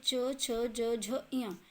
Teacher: okay, आगे है आपका च, छ, ज, झ, ञ, तो ये आपके चवर्ग हैं यानी तालु, इसका उच्चारण स्थान तालु से है